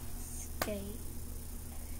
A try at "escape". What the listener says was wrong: Well, it doesn't start with scape. It's escape. Escape. Which letters make S and which letters make cape? Escape. Escape. Is that a K? C. You're right.